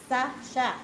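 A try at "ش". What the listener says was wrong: Bibir shin itu biar atas, tidak usah bergerak. Tidak, sya, tidak usah.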